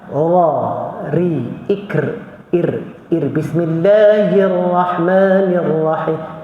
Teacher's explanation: Ra ni ada sifat takrir dia, sifat bergetar. Jadi dia tebal pun ra, bukan ra.